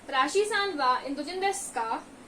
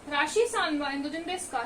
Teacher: it usually ends with a rising intonation.